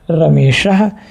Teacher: आ और ई मिल करके ए के रूप में परिवर्तित हो गए और ये हो गया रमेशः। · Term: गुण संधि